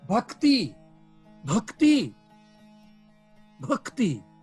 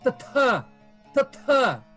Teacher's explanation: É apenas dizendo que aquele K, aquele G, aquele D, aquele T, aquele P, aquele B é aspirado.